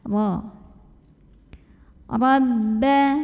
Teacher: Ra dibunyikan secara tafkhim karena ra-nya berbaris di atas, yaitu barisnya fathah. Maka cara membacanya ditebalkan. Bagaimana cara menebalkannya? Dengan mengangkat pangkal lidah kita.